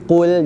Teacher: maka lam tak boleh terpengaruh dengan ketebalan qaf. Bila kita baca jangan muncul kan, qul lam tu kembali nipis.